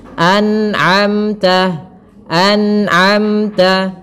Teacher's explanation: pada lafal anamta harus dijelaskan nunnya dan tidak boleh memantul